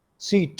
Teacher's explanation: That is, सीट में आपकी जो स साउंड है, स एक कॉन्सोनेंट है, और कॉन्सोनेंट साउंड जो है वो हमेशा, मैंने आपको बताया कि वो ऑनसेट होता है। अब ई साउंड जो है वो लॉन्ग है, जिसकी बुनियाद पे इसे हम हैवी कहेंगे